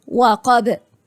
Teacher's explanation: أنا عندي هنا القاف مفتوحة يبقى حرف مفخم مفتوح درجة تانية، يبقى أنا عندي درجة أولى مفتوح وبعديه مد، لكن مفتوح بس ومفيش حرف مد بعديه يبقى درجة تانية.